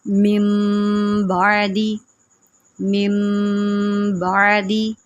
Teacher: نون کو چھپا دینا ہے اور ہم نے میم میں گنہ کر کے پڑھنا ہے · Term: اقلاب